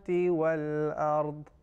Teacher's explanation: The tongue, the left edge of tongue to the left molar teeth, gums of the molar teeth, that is the exit point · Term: dad